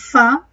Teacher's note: En el caso de Fa, se puede apreciar en el perfil, quizás no tan claramente, si nos acercamos más, que el labio inferior y los incisivos superiores, si bien se aproximan, si bien se produce una fricción, no se produce una obstrucción total, sino parcial, por eso el sonido es considerado fricativo